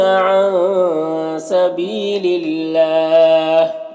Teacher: اگر وقف کریں گے تو ہا کا زر سکون سے بدل جائے گا تو پھر مد عارض وقفی ہوگا